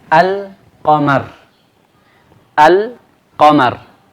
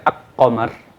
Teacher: Karena kalau kita menyebut qamar, ya, qamar yang dimasuki al, ya, lamnya kita baca jelas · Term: lam qamariyah